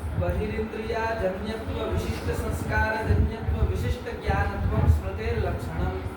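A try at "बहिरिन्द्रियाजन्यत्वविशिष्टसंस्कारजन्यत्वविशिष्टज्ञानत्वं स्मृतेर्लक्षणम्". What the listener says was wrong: क्या है फिर से पढ़ो, धीरे धीरे पढ़ो, इतना भागो मत।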